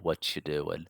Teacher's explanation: There's like a TCH sound changes from the T sound because it comes into contact with a Y sound. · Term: consonant assimilation